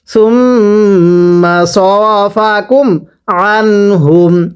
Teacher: আইনগুলো উচ্চারণ করার সময় গলার মাঝখানে চাপ দিয়ে পড়তে হবে।